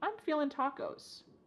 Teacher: I'm feeling, cutting off that G, I'm feeling tacos.